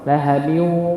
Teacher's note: Jadi udaranya keluar dari mulut maupun dari hidung. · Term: gunnah